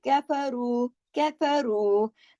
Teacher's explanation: रू के साथ वाव मद्दा है, दो हरकत खींच के पढ़ा जाएगा